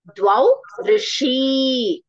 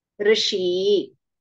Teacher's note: Hrasva becomes a dirgha and the visarga is not there. You see? No visarga.